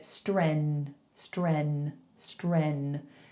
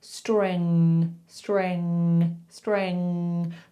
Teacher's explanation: you've got to lift the back of your tongue to kind of block your throat hole. So the back of your tongue lifts up, streng, streng, streng, like it's blocking where the air would come from.